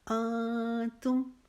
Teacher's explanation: انتم، یہاں پر ہم اخفا کریں گے، نون کی آواز چونکہ نون ساکن ہو گیا ہے، نون کے اوپر جزم آ گئی ہے، آگے حرف تار ہے جو کہ حروف اخفا میں سے ہے۔ یہاں پر ہم اپنے نون کی آواز کو ظاہر نہیں کریں گے، نون کی آواز کو ناک میں چھپائیں گے